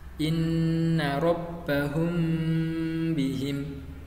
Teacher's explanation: untuk cara membacanya itu dibaca samar-samar di bibir dan didengungkan. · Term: ikhfa syafawi